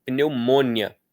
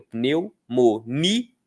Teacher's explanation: Aí o i seria uma semivogal, mas a gente não fala com força no mo, a gente fala com força no ni